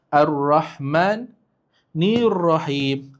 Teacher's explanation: So walaupun dia ada lam tapi kita tak sebut pun ar terus ke huruf sebelah. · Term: syamsiah, syamsiyah